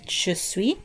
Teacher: Il est, or elle est, he or she is. And even though there's an S at the end, you don't really pronounce the consonant at the end